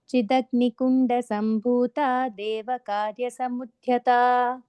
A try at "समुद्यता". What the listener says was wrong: Samudyata, again, no Mahaprana there. It's just Udyata.